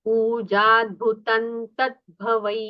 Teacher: जो अनुस्वार है उसका उच्चारण नकार जैसे करना है